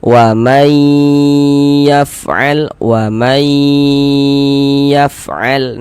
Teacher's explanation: Kemudian dighunahkan atau didengungkan. Jadi di bagian maynya itu suaranya itu kita tahan kita panjangkan sebentar sepanjang dua harakat. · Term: idgham bighunah